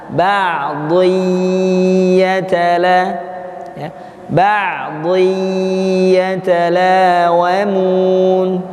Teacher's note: tanwin dileburkan ke dalam huruf ya, maka harus ditahan.